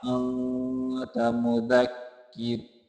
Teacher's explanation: मुदक्किर यहाँ रा बारीक होगा